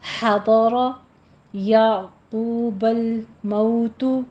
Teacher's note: ہا وسط حلق سے سانس کی آواز کے ساتھ ادا کریں گے، ضاد بھی پر ہے، را بھی پر ہے.